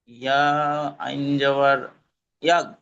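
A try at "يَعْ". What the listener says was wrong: ইয়াগ না, ইয়া গয়েন জবর ইয়াগ, ইয়া আইন জবর ইয়া। ইয়া গয়েন নেই তো এখানে, ইয়া আইন জবর ইয়া।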